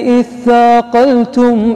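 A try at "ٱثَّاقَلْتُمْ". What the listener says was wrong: نفسها شوف الالف هذه اللي عليها الصاد الصغيره في سبيل الله اثاقلتم انت قلت اثاقلتم هي بدون همزه في سبيله في سبيل الله اثاقلتم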